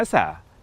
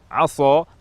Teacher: asa menggunakan huruf sin dengan sifat tarqiq, tipis. Jika berubah menjadi tafkhim, tebal, aso, maka huruf sin secara pasti berubah menjadi huruf shad, dan maknanya dari harapan semoga menjadi bermaksiat.